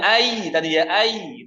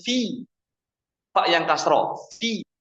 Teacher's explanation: Tapi dipendekkan suaranya. Kalau ya sukun kan panjang. Fi pendek.